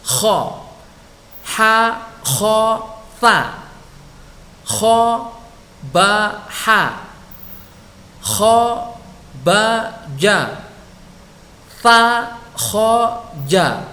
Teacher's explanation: huruf kha ada di puncak tenggorokan